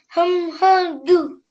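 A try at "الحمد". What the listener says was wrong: Alhamdu. Al. Ham. Du. And all together this is alhamdu. Okay, make sure that you're looking at all your letters as well. I thought you might have mixed this ha up for something.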